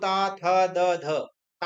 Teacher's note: जब हम बोलते हैं तो दांत में हमारी जीव लगती है इसलिए यह दंत है